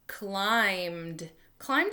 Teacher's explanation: we don't hear that B